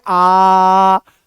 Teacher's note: तो आप जैसे ही बोलोगे आ तो आ में मुंह पूरा खुलता है। आ में मुंह पूरा खुलता है।